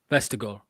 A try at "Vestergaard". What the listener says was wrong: Yeah, that was all right. I mean, a bit of a Spanish on the R there, but outside of that, it was